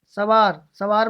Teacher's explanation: सवार में नासिक्य की आवाज नहीं आ रही